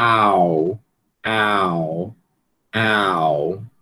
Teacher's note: a língua vai fazer essa essa esse movimento, né, posição baixa para para posição alta posterior, né? Eh, e obviamente vai ter a questão dos lábios também, né? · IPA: aʊ